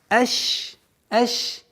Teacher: У шина есть правило, свойство тафаши, и то есть мы договариваем полноценно ш